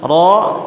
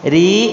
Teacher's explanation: Ra tebal, ri tipis. Ketika ra-nya harokat kasrah, otomatis dia akan menjadi tipis, dan cara pembacaannya adalah seperti rahangnya dikebawahkan.